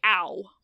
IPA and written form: au (ow)